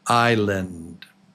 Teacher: The S is silent. You do not pronounce it.